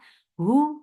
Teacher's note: Hu for the circular lips, the sound is short.